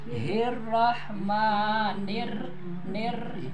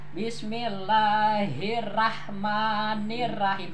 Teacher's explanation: Sama dengan ikhfa, igom gitu ya, terburu-buru. Bismillahir harus dengar getarnya itu takrir ya.